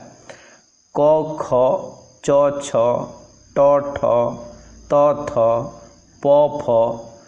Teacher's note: सेहीपरि अघोष ध्वनि कथा कुहाइथिला क ख च छ ट ठ त थ प फ अर्थात प्रति वर्गर प्रथम और द्वितीय ध्वनि एगुड़िक उच्चारण समय रे फुसफुसरु निर्गत वायु स्वरजंत्र बाटे बाहर को आसीबा बेले स्वरतंत्री निष्कंप अवस्थारे रही थाए। तेणु एही ध्वनि गुड़ी को अघोष ध्वनि बा भॉयसलेस कुहा जाए।